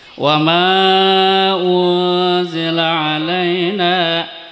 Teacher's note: cara membacanya samar-samar antara ikhfa dan idgham. Artinya harus terang tetapi disambung dengan huruf yang lain di mukanya dengan mendengung. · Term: ifa hakiki